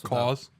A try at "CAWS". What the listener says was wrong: Claws without the L. Claws.